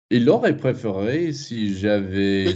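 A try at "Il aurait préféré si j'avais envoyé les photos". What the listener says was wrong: Don't put too much interest on the auxiliary because that is what we do in English. Oui, il aurait préféré. Il aurait préféré. Would he have, don't put too much interest on the auxiliary. It's an English thing.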